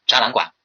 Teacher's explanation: 个是两赏相连，前变阳，赏后非赏，前半赏。大家记住了吗？这样的一个赏声的一个变调规则赏声变调规则。好，这是这个，大家注意把这些规则顺口溜记好之后，可以节省很多时间，第三个，3个赏声相连的，3个赏声相连的呢是这样的，我们是根据什么？根据它的一个词块的一个构成，比如说展览，它是一个动词，好，后边管它是一个名词，所以呢我们是把它们放在一起的，然后它放在一起作为一个整体来看待，然后和后边一个什么呢？和后边一个汉字呢组成在一起，就要变成什么？变成两赏相连，前变阳。比如说展览馆，这里边把它看作一个整体来对待，然后 把它整体变成一个阳平，然后呢后边再加一个赏声 ，对吧？再加一个赏声。好，那这里